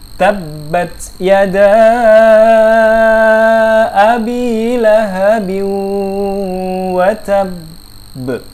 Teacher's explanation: Oke, ditahan ya. Ingat di sini qalqalah, jadi jangan sampai dimatikan dengan bunyi e.